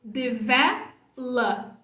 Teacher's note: Não é O. Aqui não tem som de O. É o somzinho fraquinho, é o schwa.